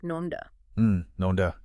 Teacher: when people say nonda, that N sound often sounds a bit like an M, kind of like nonda.